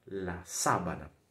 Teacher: o A em espanhol não é nasal, e sim oral, abrindo sempre a boca